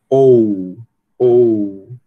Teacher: você percebe, né, que sua mandíbula se mexe, se levanta um pouco, e a sua língua vai levantar um pouco também